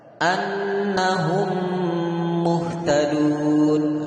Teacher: mim pertama dimasukkan ke dalam mim yang kedua dengan tempo gunnah yang dipanjangkan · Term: idgham syafawi